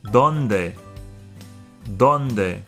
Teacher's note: The D's are dental, so it's pronounced with the tongue behind the front two top teeth.